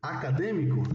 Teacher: Ela tem a antepenúltima sílaba como sílaba tônica, né? Porque é aqui onde você faz a força, né? Para acentuar essa palavra.